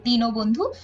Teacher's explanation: যখন এটা সমাসবদ্ধ হয়ে গেছে অর্থাৎ দিনের বন্ধু দিন ও বন্ধু তখন কিন্তু ন এর সাথে একটা ও উচ্চারিত হচ্ছে